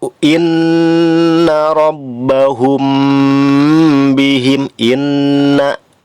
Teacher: inna gunnah asliyah, lamanya 3 harokat. Rabbahum bihim, mim mati di situ ya, rabbahum bi.